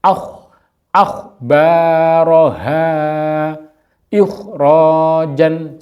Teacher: nah ini harus dibaca yang dibaca mendengur atau ngorok akh akhbaroha ikhjan jadi kasrh kemudian berhadapan dengan k yang sukun